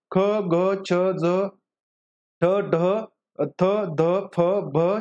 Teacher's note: ज्याच्यामध्ये ह चा उच्चार काय असतो पहा ह ची छटा असते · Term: महाप्राण वर्ण